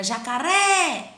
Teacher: Jacaré é o ré. Então, a sílaba tônica aí é a última.